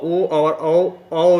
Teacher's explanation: ओ और औ, ओ और औ जो है, ओ और औ की जो ध्वनि है ना, ये जो है कंठोष्ठ यानी कंठ और ओष्ठ, कंठ यानी गला और ओठ दोनों के सहयोग से ये आवाज़ निकलती है, ओ और औ की